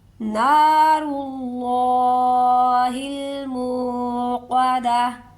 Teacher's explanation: را کو بھی پر پڑھیں گے، اور جو اللہ والا حرف ہے اسے بھی پر کر کے پڑھیں گے